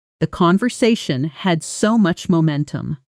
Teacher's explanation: Notice how had so much blends together. It almost sounds like had so much. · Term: connected speech